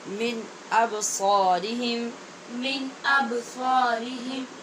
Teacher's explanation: یہاں با پہ قلقلہ ہے اور پیچھے نون پہ اظہار ہے۔ جیسا کہ آپ کو معلوم ہے کہ نون ساکن کے بعد حمزہ حروف حلقی میں سے ہے، لہٰذا اظہار حلقی ہوگا، با پہ قلقلہ ہوگا۔